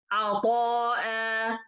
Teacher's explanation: So I stop in this word عطاء and I pronounce as if there is an ألف ساكنة in the end.